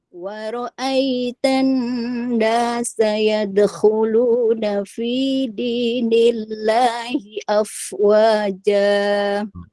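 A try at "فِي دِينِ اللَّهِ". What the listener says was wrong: Fi dini, nggak perlu fi dini. Ini tar'id. Fi dinillahi. Datar aja.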